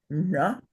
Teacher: The third varga is cerebral, so that would be na.